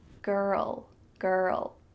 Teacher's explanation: With the L, my tongue is coming beside my teeth.